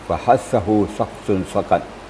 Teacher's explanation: Fa itu membacanya tidak boleh bibir kita diketupkan. Harus ada angin keluar. Sifatnya adalah mahmus atau hamas ya. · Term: huruf berangin